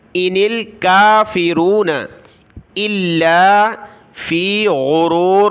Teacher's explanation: حمزہ کو لام کے ساتھ ملایا، لام کو سخت کیا تشدید کی وجہ سے